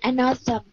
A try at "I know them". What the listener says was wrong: Tem. I know them. Đừng có nhẹ, nó phải tờ, rất là nặng. Tem, đừng có tem. Tem. Âm tê đại đi ha, đừng có xem, đừng có gì đó. Âm tê á.